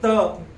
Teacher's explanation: त च्या वेळेला दाताजवळ हवेचा मार्ग आढवतो